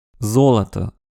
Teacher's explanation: en russe, les voyelles non accentuées sont réduites. O est notamment prononcé A.